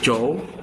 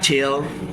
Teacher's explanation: These are post-alveolar affricatives. J vibrates the vocal cords while Ch does not.